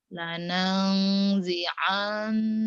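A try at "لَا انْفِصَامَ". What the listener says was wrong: Nyamber. Lanazi'an. Nunnya ditahan. Gunnah, lanangzi'an, ya.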